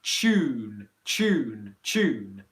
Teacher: you can think of it as a ch plus a u